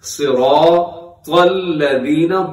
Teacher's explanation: را کے اوپر جب حرکات ہوتی ہیں را موٹا پڑھا جاتا ہے، ساتھ الف ہو تو کھینچ کے پڑھا جاتا ہے